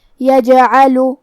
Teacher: کلمت یجعل میں حرف الجیم پہ جزم ہے تو یہاں جیم کا حکم ہے قلقلہ. قلقلہ کا معنی ہے حرف ساکن کو ہلانا، لہذا ہم حرف الجیم کو ہلاتے ہوئے یہ کلمہ کو پڑھیں گے